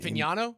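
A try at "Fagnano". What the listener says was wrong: Oh jeez, you're hitting the hard G there, buddy.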